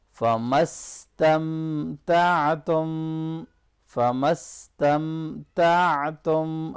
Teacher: आइन को अच्छी तरह से गले के दरमियान से अदा करना है